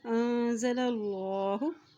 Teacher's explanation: اللہ کے نام سے پہلے زبر آ گیا ہے تو اللہ کا نام موٹا ادا کیا جائے گا